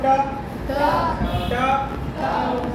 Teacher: पहले एक बार बोलो ट, जीभ जहाँ जाके टकराई उसी स्थान को बोलते हैं मूर्धा। मुड़ी जीभ और ऐसे जाकर के ऊपर तालू में जाके चिपकी, तालू से ऊपर वाले हिस्से में जाके चिपकी, उसको बोलते हैं मूर्धा, ठीक है।